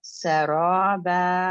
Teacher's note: یہاں پہ صرف آپ کو 2 کاؤنٹ ہی کھینچنا پڑے گا، جتنا آپ نے را پڑھا اتنا ہی آپ نے با پڑھنا ہے